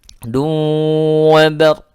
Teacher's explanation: Du wa bar, ya, bar ini ada ra, ya, ra-nya sukun didahului oleh huruf berharokat fathah, maka dia dibaca tebal.